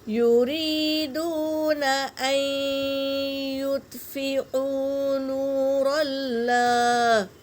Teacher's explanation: اللہ کے لام سے پہلے زبر ہے تو اللہ کا نام پر پڑھیں گے۔